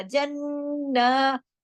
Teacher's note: एक तो सख्ती से जोड़ना पड़ेगा, जन्ना, पहले जन, एक नून पढ़ा गया, फिर ना, दूसरा नून पढ़ा गया, दोनों नून का गुन्ना मिक्स हो जाएगा तो बड़ा गुन्ना हो जाएगा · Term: अकमल गुन्ना